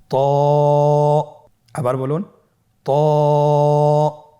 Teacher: হরফটি মোটা হরফ, এটা উচ্চারণের সময় অবশ্যই মোটা করতে হবে এবং উচ্চারণ করার সময় 1 আলিফ টেনে পড়তে হবে।